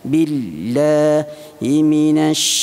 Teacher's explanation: Sifat yang ada pada huruf shin iaitu tafasshi, dia bunyi sh.